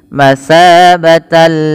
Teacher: Maka masabatalli, tidak boleh ada penahanan, tidak boleh masabatalli. Ini salah, hanya masuk saja tanpa disertai dengan gunnah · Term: idgham bila gunnah